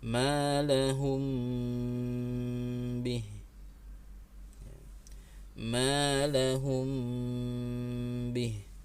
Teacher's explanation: Contoh berikutnya malahum bih, ya, perhatikan mim sukunnya tidak ada baris sama sekali, huruf mimnya tidak ada baris sama sekali, maka ini sekali lagi menunjukkan bacaan mimnya ditahan 3 harokat, tidak tergesa-gesa mengucapkan huruf setelahnya. Jadi tahan dulu selama 3 harokat. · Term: gunnah